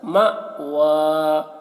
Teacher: یہ حمزہ ساکنہ ہے، ٹھیک ہے، تو یہاں پر جھٹکا لگے گا